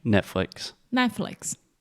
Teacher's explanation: we kind of have that very quick rising intonation and then it falls down at the end.